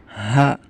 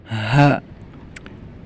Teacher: suara hurufnya keluar dari pangkal tenggorokan, jadi agak lebih tebal. H. Beda dengan H yang tipis. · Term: Huruf H